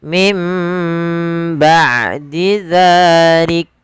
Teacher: Maka di sini iklab membalikkan suara apa? Suara mim, suara nun yang sukun diganti dengan mim